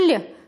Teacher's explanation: Звук «Л» согласный, звонкий, мягкий.